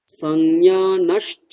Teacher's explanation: ওই বিসর্গটাকে আমরা সন্ধি করে একসাথে করে চ বলবো, তালব্য স বলবো একটা।